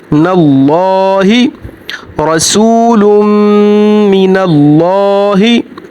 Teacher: यहाँ पर मीम मुतशद्दद है, मीम मुतशद्दद पर हमेशा गुन्ना होगा और लाम से पहले ज़बर है, लाम मोटा पड़ा जाएगा। अल्लाह का नाम है, यहाँ पर लाम मोटा पड़ा जाएगा।